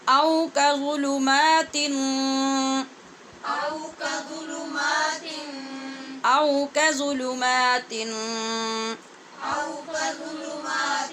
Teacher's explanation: میم کے اوپر کھڑی زبر پڑھنی ہے اور شروع میں کاف پہ پڑی زبر ہے، اس کو لمبا نہیں کرنا